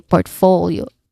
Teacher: we blend the last two syllables here